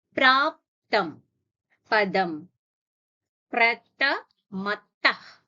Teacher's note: Pratha Ha is a Mahaprana. So a forceful exhalation has to be done here.